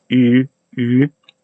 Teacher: supposed to be pronounced the same place as e, but with rounded lips